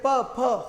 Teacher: होठ बंद होंगे, हवा एक बार यहाँ रुकेगी फिर आएगी।